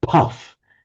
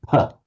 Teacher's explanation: It's more apparent with a p. But if we have a word beginning with a p followed by a vowel, the English pronounce it with a bit of a puff of breath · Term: aspirated P